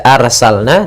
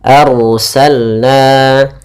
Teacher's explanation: di sini ada Ro yang didahulukan dengan huruf fathah maka rnya tebal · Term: ra-nya tebal